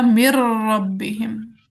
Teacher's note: अब जब नून रॉ में दाखिल हो गया तो वो बन गया मिर रब्बिहिम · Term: इदगाम